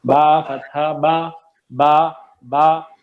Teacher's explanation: اچھا ہونٹوں سے ادا ہوگا, ہونٹ بند ہوں گے تو با ادا ہوگا